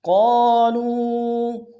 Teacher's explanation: ظالمین انفسہم، حمزہ کو نون ساکن سامنے آنا، غنہ کریں گے، انفسہم، قالوا، قاف کے سالف مدہ ایک انداز میں کھینچیں گے، قاف کو موٹا ادا کریں گے